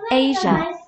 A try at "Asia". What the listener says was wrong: S 소리 빼곤 다 맞은 거야. Asia.